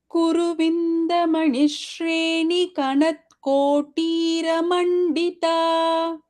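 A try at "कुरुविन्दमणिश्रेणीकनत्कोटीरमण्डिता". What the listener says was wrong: And Bhagini, it is Kuruvindamanishrini Kanatkotiramandita. The ni is Dirgha.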